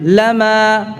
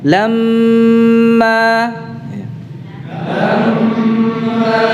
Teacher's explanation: Kalau kita membacanya dengan mentasydidkan mimnya, artinya kita panjangkan durasi gunnahnya. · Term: mim musyaddadah